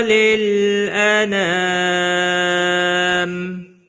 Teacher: انا نا الف مدہ ہے، ایک الف کے برابر کھینچ کر پڑھیں گے. میم وقف کی صورت میں میم ساکن پڑھا جائے گا، وقف بالاسکان ہوگا